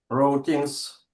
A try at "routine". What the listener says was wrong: Uh so O is not pronounced.